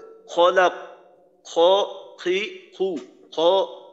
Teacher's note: তো বাংলা খর থেকে আরবি খ এইটা 2 ধাপ পিছনে। বাংলা খর পিছনের দিকে হইলো কফের মাখরাজ, তো কফের মাখরাজের থেকেও একটু নিচে হইলো খর মাখরাজ।